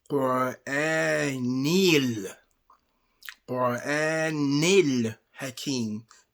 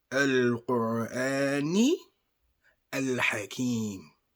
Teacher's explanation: Al-Hakim. But they incorporate the noon, which is the end sound in the Quran, with the word the. So it becomes Qur'anil.